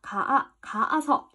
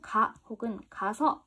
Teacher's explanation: 너 집에 가 라고 했을 때 혹은 너 집에 가서 라고 했을 때 이런 애들이 붙었을 때면 두 개가 가아서 라고 발음을 하는 게 아니라 하나를 뚝뚝 떨어뜨려가지고 가 혹은 가서 이렇게 된다는 거지. 동음이라면 하나를 탈락시킨다 라는 거야. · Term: 동음 탈락